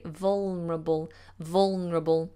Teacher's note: I generally drop the L quite a lot actually.